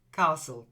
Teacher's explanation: it's a silent T. It's like the T isn't there.